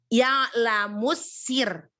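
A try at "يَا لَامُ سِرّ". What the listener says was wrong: Ya lamus sir. Tahan sir. Sir, lebih tipis sir. Ya, jadi jangan terlalu naik-naik pangkal lidahnya. Terus tekan juga itunya apa? R-nya tekan. Nggak boleh terlalu R gitu.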